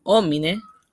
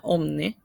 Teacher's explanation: En determinados contextos las átonas internas desaparecen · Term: síncopa de vocales átonas internas